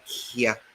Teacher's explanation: this letter K, has been palatalized in order to give us another meaning entirely.